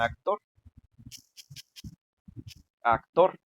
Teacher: Actor también es aguda porque la sílaba tónica es la tor, o sea, es la última sílaba, ¿no? Pero en este caso esta la parola termina con R.